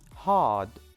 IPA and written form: hɑːd (hard)